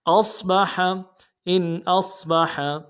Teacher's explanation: اظہار کریں گے، ان حمزہ کو صاد کے ساتھ ملانا ہے، اور صاد کی سیٹی موٹی ہوگی، با کو نرمی سے ادا کریں گے، حا کو گہرائی سے ادا کریں گے